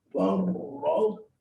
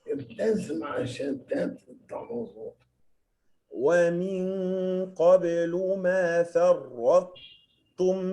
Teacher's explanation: بنرفع الطاء إلى مخرجها ونثبت فيها صفة الإطباق. إطباق معناه إن اللسان بيلزق في سقف الحنك وبعدين تنزل تقول التاء المرفقة ما تطلعش الطاء. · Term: الإدغام الناقص